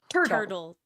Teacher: It's a quick alveolar tap.